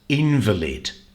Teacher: this word is also a noun, invalid, and the stress here is on the first syllable